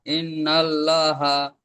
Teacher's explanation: আল্লাহ শব্দের ডান দিকে জবার এসছে তাই আল্লাহর লামকে পুর করে পড়তে হবে